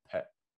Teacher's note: when you say the word pet with your hand in front of your face, you could feel air hitting your hand, pet. But when you say spy, you don't feel anything. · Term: burst of air